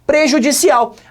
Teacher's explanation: prejudicial a sílaba forte a última de novo palavra oxítona